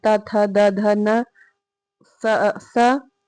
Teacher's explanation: जिन व्यंजनों के उच्चारण में जीहवा ऊपरी दांतों को स्पर्श करती है उन्हें हम दंत व्यंजन कहते हैं। · दांत और जीभ के स्पर्श से बोले जाने वाले वर्ण को दंत वर्ण कहते हैं।